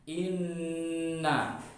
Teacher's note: di sini ada nun tasydid, maka harus dibaca gunnah musyaddada, harus dibaca tasydid dan idgham, harus didengungkan